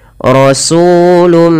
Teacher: Apabila ada tanwin, pada dasarnya tanwin adalah suara nun yang dimatikan atau dilafalkan tapi tidak ditulis, bertemu dengan huruf mim, maka suara nunnya dimasukkan kepada huruf mim dan diganti dan dihilangkan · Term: idgham